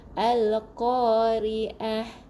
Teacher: huruf ain di bahagian rongga kerongkong. Rongga kerongkong tengah-tengah halkum. Lelaki akan bergetar sebab halkum lelaki terkeluar sikit.